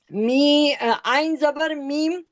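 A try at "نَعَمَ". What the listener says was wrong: عین زبر میم نہیں، نا. عین زبر نا میم زبر ما.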